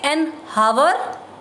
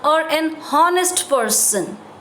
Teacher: If we are writing those words begin with H. But in sound, the words are not starting with H sound. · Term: H is silent